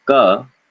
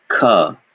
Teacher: tell the difference between ka, unaspirated, and ka, aspirated